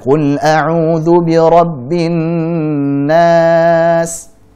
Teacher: Meskipun saat kita dengarkan para qari, ya, membaca panjangnya gunnah yang mutawwalah ternyata lebih panjang dari mad tabi'i